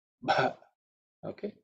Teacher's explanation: the bha is fourth letter in the pa varga, so it has to be aspirated